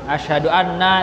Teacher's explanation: Itu kalau di qiraat tetap fatal artinya. Asyhadu anna itu artinya pendek, satu harokat, pendek.